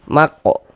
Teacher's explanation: Ini huruf kaf sukun mantul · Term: qalqalah sugro